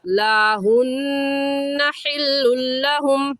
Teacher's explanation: हुन्ना में नून मुशद्दद है, नून मुशद्दद पर गुन्ना होता है, हमेशा गुन्ना करेंगे।